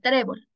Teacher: obligatoriamente sí acá tenemos la palabra trébol tenemos dos sílabas tres la mayor fuerza de voz se encuentra en la penúltima sílaba